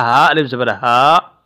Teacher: اس ہا کی ادائیگی بھی سینے سے ادا ہوتی ہے